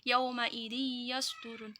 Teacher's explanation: Idgham bi ini cara membacanya masuk dengan mendengung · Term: idgham bi gunnah